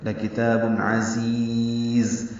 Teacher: تنوین کے بعد عین آنے کی وجہ سے اظہار ہے. عین وسط حلق سے ادا ہوگا.